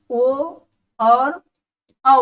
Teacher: ओ जो होता है आ और ऊ से बनता है, इसलिए इसका उच्चारण स्थान क्या हो जाता है, कंठ और ओष्ठ, कंठ और ओष्ठ, इनका उच्चारण स्थान हो जाता है।